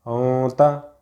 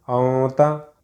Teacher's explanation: نون کی آواز کو ناک میں چھپا کر پڑھنا چاہیے، نوک زبان تالو سے ہٹا کر، جیسے اردو میں پنکھا کی نون کو پڑھتے ہیں۔ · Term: اخفا